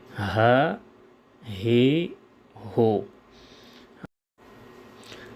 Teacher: ہا کو زبر زیر پیش کے ساتھ یوں ادا کریں گے: ہا زبر ہا، ہا زیر ہے، ہا پیش ہو، ہا، ہے، ہو۔ نرم آواز سے ادا ہو۔ صفت لازمہ رخوت کی وجہ سے۔